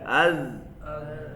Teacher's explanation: ٹھیک ہے، اور جن حروف میں یہ صفت پائی جاتی ہے ان کو ادا کرتے وقت آواز ان کے مخرج میں ایسی نرمی سے ٹھہرتی ہے کہ آواز جاری رہتی ہے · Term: صفت رخوت